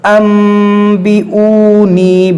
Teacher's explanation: اس نون کو میم سے بدل کر پڑھیں گے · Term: اقلاب